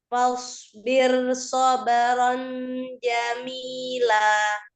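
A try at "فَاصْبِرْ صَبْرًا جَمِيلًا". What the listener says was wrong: Tambahkan lagi dengungnya ya. Tanwin ke rumus Jim.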